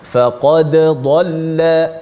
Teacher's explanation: baca secara jelaskan dal mati, dan kebetulan huruf dal ada qalqalah, pastikan bunyi qalqalah tu.